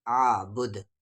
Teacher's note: رکنے کی صورت میں یہاں پر قلقلہ ہو جائے گا کیونکہ دال حروف قلقلہ ہے